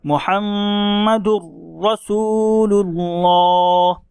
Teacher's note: تو تنوین یا نون ساکن کے بعد حروف یرملون میں سے را آ رہا ہے، اسی لیے ہم نے دال کو را کے ساتھ ملایا اور مشدد کے ساتھ پڑھا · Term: ادغام بلا غنہ